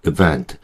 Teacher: 이 i 발음을 정확하게 한다기보다는 힘을 다 빼고 발음해요. 왜냐면 엑센트가 없거든요. 뒤에 있거든요. 엑센트가. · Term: 슈아 사운드